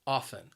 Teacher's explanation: it has two syllables and the stress is on that first syllable